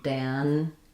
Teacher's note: So, in Daniel, we have first syllable stress, the a vowel. It sounds like the vowel in cat